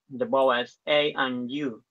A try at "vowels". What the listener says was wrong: Well, it's I and you, and now you said bowls.